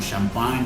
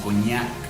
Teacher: cada vez que tú te encuentres una gn vas a pronunciarlo como la ñ nuestra del español